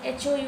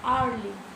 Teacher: Although it begins with the consonant H, it is pronounced with O sound, hourly.